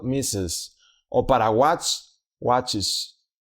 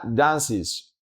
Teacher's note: Entonces, en este caso se le añade es, que además siempre crea una sílaba extra al hablar y se pronuncia como is. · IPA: /ɪz/